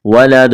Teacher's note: وقف کریں گے، دال پر قلقلہ کریں گے